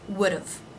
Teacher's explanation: Would, have, would've. Again, it's the first syllable, would've, that is stressed, and d've is short and low in pitch and volume. Would've. It would have been nice.